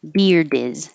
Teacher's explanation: You will hear the D if there's a vowel after it, like his beard is cool.